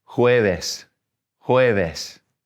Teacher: Thursday, we got a J at the beginning, so we're going to breathe it a little bit.